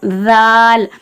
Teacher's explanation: மேலே பல்லு, அந்த 2 பல்லு எல்லாருக்கும் தெரியும் இல்லையா, அந்த மேலே பல்லோட ஓரங்களில் வந்து நாக்கோட நுனி வந்து தொடுற மாதிரி வால், வாயை கொஞ்சம் திறந்து அந்த நாக்கு வந்து வெளியே தெரியணும் பார்த்தா, அந்த மாதிரி விசிபிளாக இருக்கணும். · ஜாலுக்கு நாக்கு வந்து கொஞ்சம் வெளியே நீட்டி தெரிகிற மாதிரி வந்து ஓதணும்